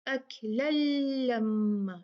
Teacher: لل جو ہے یہ ادغام کامل ہے اور اس میں غنہ نہیں ہوگا